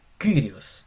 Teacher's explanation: como una i, pero con una boca de u